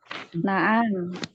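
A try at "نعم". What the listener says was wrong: Na'am, tidak ada na'am panjang, na'am. Yang ada na'am. Nah, pendek.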